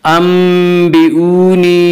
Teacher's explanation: अंबिऊनी या मद्दा, या मद्दा हो या जो साकिन हो उससे पहले ज़ेर हो। या मद्दा को एक अलिफ के बराबर खींच कर पढ़ेंगे।